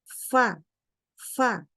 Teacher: makhrajnya itu adalah bagian bawah daripada gigi seri atas ketemu dengan bagian dalam bibir bawah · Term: huruf fa